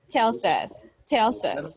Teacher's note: we're going to connect the letter S, the sound of the letter S with the sound of the vowel U here